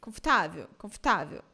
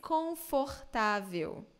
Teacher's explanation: you hear clearly all the vowels in Brazilian Portuguese